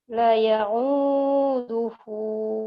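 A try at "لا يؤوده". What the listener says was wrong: Lanya panjang. La ya'uduhu. Cuma suaranya aja masih naik turun.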